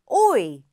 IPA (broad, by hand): ɔɪ